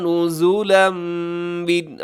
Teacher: نزلا من یہاں پہ ہے ادغام ہونے کے ساتھ، من پہ ہے اظہار